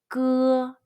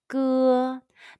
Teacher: Be sure to use the muscle at the very back of your tongue and your throat to pronounce the 歌.